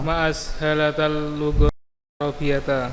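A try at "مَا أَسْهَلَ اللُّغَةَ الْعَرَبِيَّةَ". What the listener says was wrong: Ma'ashala ya. Bukan ashalata. Taknya enggak ada. Pokoknya rumusnya af'ala ya. Sudah cuma 4 huruf ini, tidak boleh ada taknya ya. Ma'ashala.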